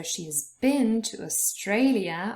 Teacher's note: are written in the present perfect so we've got has auxiliary and then bin our main verb and bin is stressed so she has been to australia australia has three syllables and